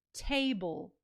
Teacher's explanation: the bl e is our unstressed final syllable. The vowel sound in that final syllable is the schwa sound. And it's kind of combined with the l a little bit, but it table.